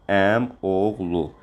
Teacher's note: Əmioğlu, bacıoğlu, dayıoğlu. Burada i düşür. Olur əmoğlu.